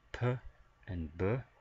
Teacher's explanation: just going back one more time to the stops we have p and B for bilabial meaning we're using both lips